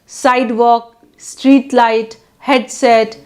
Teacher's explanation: primary stress falls on first syllable